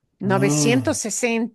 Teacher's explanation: It's actually two words, but you're hearing that last S of 900 string into the next word beginning with an S. 960. You're not going to hear people pause between those two words.